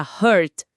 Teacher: Se a pessoa disser com um som mais fechado, puxando pro u, vira hurt.